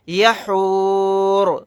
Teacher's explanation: آیت کرنے کی صورت میں را کو ساکن بنا کر پڑھیں گے.